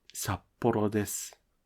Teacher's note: When the second letter is a small っ (tsu), the pitch of the first letter is lowered.